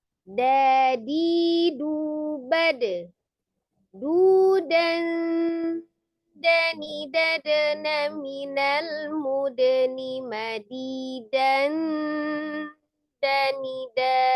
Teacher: Ujung lidahnya ada di pangkal gigi seri bagian atas. Nah, termasuk di ikhfa yang tipis tadi ya, yang tipis sama dengan ta. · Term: huruf dal